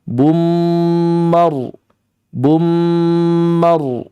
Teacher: menutup rapat untuk mengucapkan huruf setelahnya yaitu mim bum menutup rapat yang hanya keluar suara hanya melalui sumber suaranya hanya di hidung saja